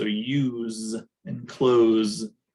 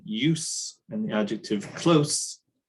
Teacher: the verbs use the Z form. So use and close, but the non-verb forms, so the noun use and the adjective close, those use the voiceless forms